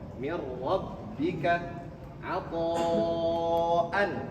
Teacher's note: Maka kalau bertemu nun sakinah bertemu dengan ro, maka jangan ditahan. Diidghamkan tetap, tetapi tidak ditahan. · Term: idgham bila gunnah